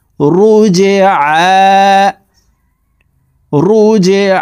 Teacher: জিম কলকলার হরফ নিচের দিকে ধাবিত করে ধাক্কা দিয়ে উচ্চারণ করতে হবে